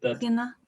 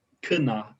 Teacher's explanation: after an obstruent like a sh, you don't pronounce it as a g, you pronounce it as a k. It becomes voiceless.